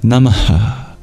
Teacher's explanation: You breathe out at the end of your salutations. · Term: exhale